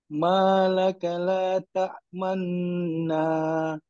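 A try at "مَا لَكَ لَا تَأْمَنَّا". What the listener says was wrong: Cuba lajakkan dengung tu bagi dua harakat yang lebih sikit. Dua harakat yang memuaskan. Kalau saya nak lebih sikit lagi dengung tu, supaya nak jelaskan dia punya Ismam.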